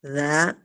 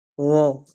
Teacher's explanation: Kemudian huruf wo, hanya saja huruf wo ini lidahnya mengangkat ke atas ya. Kalau za lidahnya kan menghampar ya, za. Nah kalau huruf wo dia naik ke atas